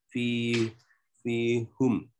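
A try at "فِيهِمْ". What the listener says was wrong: Fihim bukan fihum.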